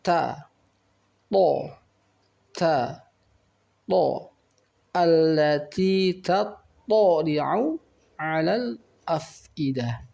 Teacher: Baik, lalu dalam ayat yang ketujuh kita perhatikan di sini ada huruf ta dan to. Maka ta ini ada suara hamas, ada sedikit suara desis, tetapi dengan to ini suara kuat dan membacanya dengan huruf isti'la, mulut terangkat, sehingga membacanya tidak boleh sama dengan huruf ta.